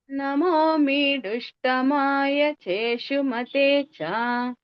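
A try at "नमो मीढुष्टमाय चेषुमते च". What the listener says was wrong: మీడుష్టమాయలో మా కింద స్వరం ఉంది, డా కింద వస్తున్నట్టుంది, ఒకసారి గమనించండి మళ్ళీ. నమో మీఢుష్టమాయ చేషుమతే చ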